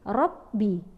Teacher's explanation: Karena ro berbaris fathah adalah tafkhim, tebal, yang dibaca berat.